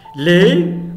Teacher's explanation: Les, on n'écoute pas le S. La consonne S dans le mot les ne se prononce pas.